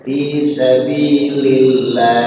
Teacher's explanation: Lafzul Allah dibaca tarqiq, dibaca tipis karena bertemu dengan lam berbaris kasroh. Setiap lafzul Allah dia bertemu dengan huruf berbaris kasroh dibaca tipis.